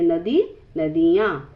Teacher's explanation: इसमें बड़ी ई छोटी इ में बदल जाती है।